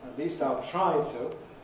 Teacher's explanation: I use [tu] at the end there, semi-weak, still rounded and back. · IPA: [ət ˈliːst aɪl ˈtraɪ tu]